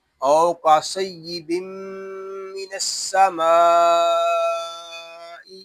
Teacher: واو لین کو ہم کھینچ کر نہیں پڑھیں گے، اس کو او یا او ایسے نہیں پڑھیں گے، اس کو پڑھیں گے او۔